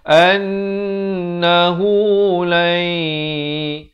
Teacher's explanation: idgham bi gunnah, masuk beserta dengung. 2 harakat.